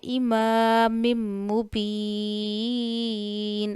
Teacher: مبین میں با ہونٹوں سے ادا کرنا ہے، ہونٹوں کے گیلے حصے سے. یا مدہ ہے، یا ساکن سے پہلے زیر ہے.